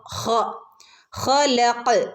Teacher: ഖ തൊണ്ടയിൽ നിന്ന് വരുന്ന ലെറ്ററാണ്. തൊണ്ടയുടെ മുകൾ ഭാഗത്തു നിന്ന് വരുന്ന ലെറ്ററാണ് ഖ